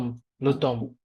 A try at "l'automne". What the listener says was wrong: Luton না Luton M sound silent থাকে Luton